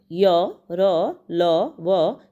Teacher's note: मुख के किसी भी भाग को पूरी तरह नहीं छूती तथा इनके उच्चारण में श्वास का अवरोध बहुत कम होता है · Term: अंतस्थ व्यंजन